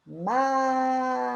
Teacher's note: É o má. A sílaba má é a sílaba tônica, a sílaba mais forte.